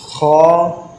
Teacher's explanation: اگر خا، یہ بھی حلقی مخارج میں سے ہے، اس کی نکلنے کی جگہ یہ کہ حلق کے اوپر والے حصے سے ادا ہوتا ہے، خا جو حلق کے اوپر والے حصے سے ادا ہوگا